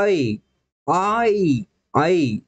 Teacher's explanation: जेव्हा आ आणि ई हे दोन स्वर एकत्र येतात आणि त्यापासून हा संयुक्त स्वर तयार होतो